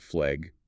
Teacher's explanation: It's a form of vowel fronting where the A sound shifts forward and upward in the mouth, sometimes sounding more like a short E